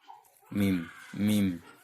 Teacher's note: Makhraj huruf mim adalah bibir atas dan bibir bawah dirapatkan bersama-sama. Mim ini adalah salah satu huruf yang juga hembusan nafas keluar dari hidung. Mim. Jadi ketika kita menyebut mim, maka akan ada aliran nafas yang keluar dari hidung.